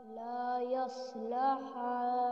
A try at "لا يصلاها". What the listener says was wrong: लाम पे स्टैंडिंग फतहा को खींच के पढ़ लीजिए لا يصلاها